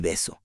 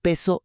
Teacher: En beso las cuerdas vibran antes de soltar el aire. En peso no vibran.